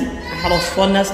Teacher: را صاد دونوں کو موٹا پڑھا جا رہا ہے